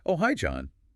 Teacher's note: Rising intonation shows she's pleased he called.